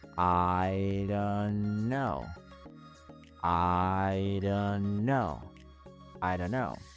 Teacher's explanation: Y esa T, al encontrarse en medio de dos sonidos de consonantes, desaparece por completo.